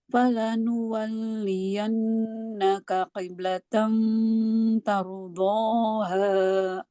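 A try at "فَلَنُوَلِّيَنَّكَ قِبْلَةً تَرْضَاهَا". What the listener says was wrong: Iya, kiblatannya itu kenapa cepat-cepat banget? Kiblatan, apa kayak gitu baca? Kiblatan. Satu-satu.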